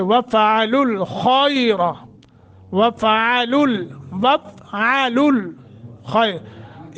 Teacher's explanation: खा को मोटा, रा को मोटा